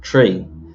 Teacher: people are not very good at pronouncing the th sound so the number three for example is often pronounced tree